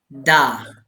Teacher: നാവിന്റെ തലയും മേലെ മുൻപല്ലുകളും മുരടും.